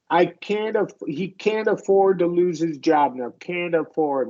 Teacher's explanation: A lot of Americans in these situations will flap the T.